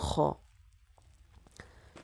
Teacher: তিন নাম্বার মাখরাজ হলকের শেষ হইতেন খ।